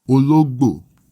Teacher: It has a middle tone, then a high tone, then a low tone.